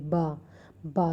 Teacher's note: दोनों दांत जो हैं, सॉरी, बा दोनों ओठ जो हैं वो बिल्कुल बंद हो जाते हैं और ध्वनि उच्चारित होती है